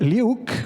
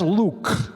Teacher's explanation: there's Luke with the dark L